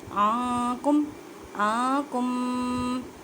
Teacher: اخفا کا مطلب ہے چھپانا، نون ساکن کی آواز کو چھپانا ہے ایک الف کی مقدار میں · الف سے پہلے زبر ہے تو الف مدہ کا قاعدہ کریں، مینس کہ ایک الف کی مقدار میں کھینچ کر پڑھیں۔